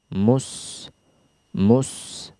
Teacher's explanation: makhrajnya adalah di ujung lidah bertemu dengan dinding belakang gigi seri bawah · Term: sin